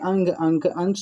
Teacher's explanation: अनुस्वार के उच्चारण में नाक से अधिक सांस निकलते है और मुख से कम